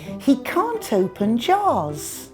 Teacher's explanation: You can hear the T sound. It connects can't and open and links the two words together.